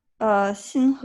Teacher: the second syllable, the inflection has to be a rising inflection because you could say it other Yeah, ways and it means something very different.